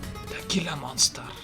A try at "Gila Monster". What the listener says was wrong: Oh, you don't pronounce the G.